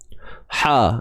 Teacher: Datangnya daripada tengah kerongkong kita ni. Ha, sempitkan. Sempitkan bahagian tengah kerongkong ni. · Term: ha pedas